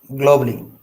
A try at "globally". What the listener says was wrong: Globally, not globally, globally. A is silent. You have to ignore it.